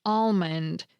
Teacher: I happen to be one of the speakers who pronounces the L